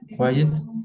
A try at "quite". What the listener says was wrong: Yeah, this is not quiet, this is quite. Okay. Quiet is silent. Quite is similar to very.